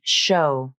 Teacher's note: the letters O and W are pronounced like the O diphthong, not the W consonant